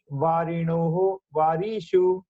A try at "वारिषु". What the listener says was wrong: वारिषु वारिषु श्रवण समये दीर्घं शृण्वद् ह्रस्वं वदतु, वारिषु